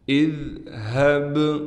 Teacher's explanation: اذہب، حمزہ کو ذال سے ملائیں گے، ذال کو نرم کر کے پڑھیں گے، ہا کو گلے سے نکالیں گے لیکن جو گلا سینے کی طرف سے ہے وہاں سے ہا کو نکالیں گے، ہا کو با سے ملائیں گے، با پر قلقلہ یعنی آواز کو ہلا کر پڑھیں گے۔